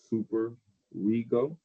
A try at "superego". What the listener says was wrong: You've already used the R for super. Super ego.